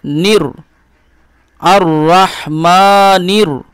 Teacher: এই নুনের সঙ্গে র এর ইদগাম ঘটাবেন মিলন ঘটাবেন